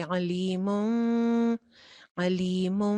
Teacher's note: غنہ مطلب اس کی آواز کے اوپر تھوڑی دیر کے لیے سٹے کریں گے، تھوڑا سا آواز کو ناک میں جانے دیں گے.